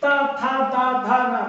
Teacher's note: तो हमारी जीभ जो है कहां लग रही है ये जो दांत है ऊपर के उसमें लग रही है तो इसीलिए ये दंत्य अक्षर हो जाएंगे दंत वर्ण हो जाएंगे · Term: दंत्य वर्ण